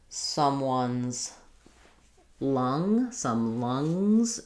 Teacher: And for lung, we have the ng, but the schwa vowel.